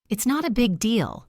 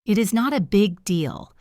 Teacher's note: The stress usually falls on the word big.